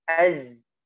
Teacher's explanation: Biasanya kita membacanya wa khalaqnakum azwaja, jadi az ya, karena dikeluarin napasnya. Padahal zai tidak dikeluarkan napasnya ya. Dia dialirkan suaranya, napasnya tertahan.